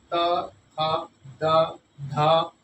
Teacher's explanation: कहीं ना कहीं जीवा दांतों को स्पर्श करती है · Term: दंत वर्ण